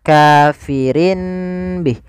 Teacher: Iqlab itu mengganti suara nun menjadi suara mim. Maka di sini ditandai dengan huruf mim kecil.